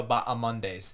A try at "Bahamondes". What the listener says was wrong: The H is silent. It's Bahamondes, not Bahamondes. It's Bahamondes.